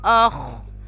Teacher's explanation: آگے ہے خا، اس کو موٹا پڑھیں گے